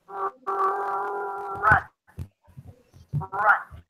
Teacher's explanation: That's to add the tension of the lips. So the lips round, especially when the R appears at the beginning of words.